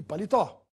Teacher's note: na penúltima sílaba no li portanto é uma palavra paroxítona e a palavra palitó tem a sílaba mais forte na última tó e é portanto uma oxítona vamos ver as regras de acentuação · a palavra paletó tem a sílaba mais forte na última, tó